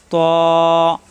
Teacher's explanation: জিব্বার আগা উপরে দুই দাতের গোড়ায় লাগবে ত মোটা হবে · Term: মোটা হরফ